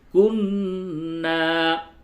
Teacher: یہاں پہ غنہ کریں گے، ناک میں آواز لے کے تھوڑی دیر گنگنائیں گے